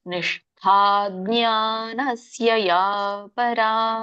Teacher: ಮೂರ್ಧನ್ಯ ಶ ಇದೆ, ಮತ್ತೆ ದೊಡ್ಡ ಠ ಮಹಾಪ್ರಾಣ ಠ ಇದೆ